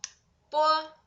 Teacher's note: the initial 波, like b in English word book, but it is voiceless